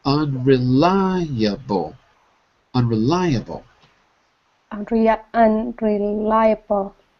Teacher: And the stress is on the third syllable because the big dot is above the third syllable.